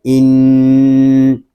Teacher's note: نون میں شدت ہے، اس کو غننے کے ساتھ پڑھیں گے